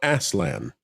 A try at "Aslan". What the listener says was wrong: Usually Aslan with a Z as opposed to the S, but I think you're probably fine.